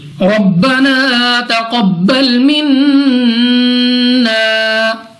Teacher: را پر زبر، را پر یعنی موٹا پڑھیں گے۔ قاف مستعلیہ میں سے ہے، اس کو موٹا پڑھیں گے۔